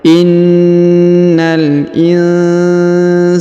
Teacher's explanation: Huruf na ditahan dan ditekan karena terdapat tanda tasdid ya.